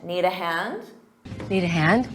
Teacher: notice you do the rising intonation to make it sound like a question